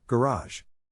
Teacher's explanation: In this case, the accent is in the second syllable, corresponding to Raz.